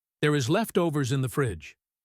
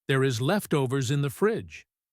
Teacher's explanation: But tonally, it is an iceberg. Her voice is flat. It is monotone.